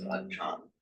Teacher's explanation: So the acharya, then they drop off the ya or the iya at the end, which would then become achar. But under the rules of Thai phonetics, the final r gets pronounced as a n, so it becomes achan.